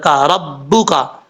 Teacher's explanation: کاف جو ہے وہ بریک پڑھا جاتا ہے، اس کا مخرج ہے زبان کی جڑ اوپر والے تالو کے سختی سے لگے تو کاف پڑھا جاتا ہے